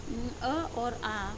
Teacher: अ और आ बोलते समय मुंह खुला रहता है और ध्वनियाँ सीधे कंठ से निकलती हैं